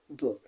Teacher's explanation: B is a voiced consonant sound because the vocal cords vibrate when we pronounce B.